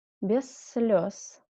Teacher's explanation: Here again 2 dots. And Z in the end of the word should be read like S.